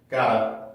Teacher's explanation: 그래서 그 got to가 gotta가 될 수 있는 데는 이렇게 똑같은 발음이 한 두 개가 연속적으로 오니까 하나만 남기고 T 발음이 모음과 모음 사이에 껴있고 강세음절의 시작이 아니기 때문에 플랩으로 바뀌어서 gotta가 되는 거예요. 이렇게 부드럽게 gotta.